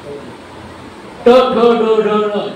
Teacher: ट ठ ड ढ ण, जिभेचं टोक बरोबर मध्ये लागतं